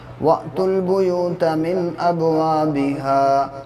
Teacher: واو الف یہ تین چیزیں ایکسٹرا لگی ہوئی ہیں لیکن یہ سائلنٹ ہے، آپ کو واو کو ڈائریکٹلی لام سے ملا دینا ہے